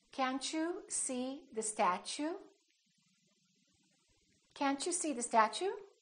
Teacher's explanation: when the t is followed by a u it becomes Chu